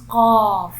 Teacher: When the deepest part of the tongue touches the soft palate, then we will pronounce قاف